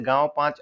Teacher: जिसमें नाक से कम मुख से ज्यादा वायु निकलती है, उसे अनुनासिक कहते हैं